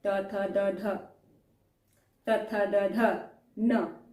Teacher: आप जिह्वा को बाहर लाके दंत से टच करके बोल रहे हैं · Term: दंत स्थान